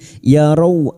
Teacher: Rau fathah bertemu sukun kita lunakkan huruf lin.